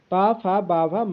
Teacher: बा वर्ग आपको औष्ठ से बोला जाता है · पा वर्ग आपका औष्ठ से बोला जाता है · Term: औष्ठ ध्वनि